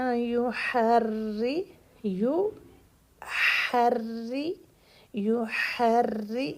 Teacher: یہاں را کو زیر ہے تو را یہاں پر باریک رہے گا